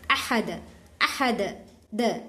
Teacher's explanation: قلقلہ بولے تو اس کا مخرج ٹکر کھا کو الگ ہوتا ہے